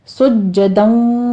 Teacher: جیم کے اوپر تشدید ہے، سختی کیجئے